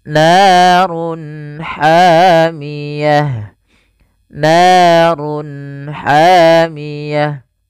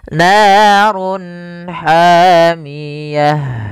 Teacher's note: narun hamiah Run ketemu Ha jelas kita namakan dengan izhar halqi suaranya harus dibaca dengan jelas izhar jelas halq karena dia bertemu dengan huruf-huruf halq setelahnya yaitu huruf ha maka harus dibaca dengan jelas narun hamiyah ya shodqallahulim Ya baik